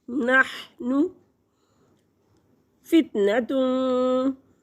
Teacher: नहनु फितनतुन, नून तनवीन के बाद फ़ा आ गया और रूफ़ इख़्फ़ा में से तो यहाँ पे गुन्ना करेंगे, 2 हरकत के बराबर नाक में आवाज़ को छुपाएंगे